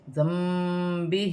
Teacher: نون ساکن کی آواز کو میم سے بدل کر غنے کے ساتھ ادا کیا جائے گا ، جیسے ذنبہ، اسے ایک قلاب کا قاعدہ کہا جاتا ہے،